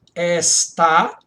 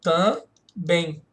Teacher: As duas têm sílaba tônica no final.